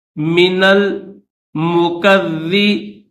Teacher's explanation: نون کو لام کے ساتھ ملائیں گے، درمیان میں یہ الف نہیں پڑھیں گے